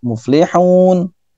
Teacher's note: kalau berhenti itu di samping dimatikan dan panjang boleh sampai 6 harokat